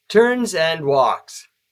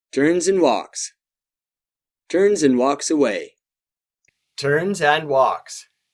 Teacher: Hear how and is just a quick M between the two verbs. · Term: nasal buzz